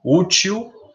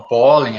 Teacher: a sílaba tônica é a penúltima, terminada em L. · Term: paroxítonas